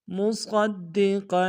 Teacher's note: صاد کو موڑا ادا کرتے ہوئے دال کے سامنے لائیں گے، دال کے اوپر تشدید زور دیں گے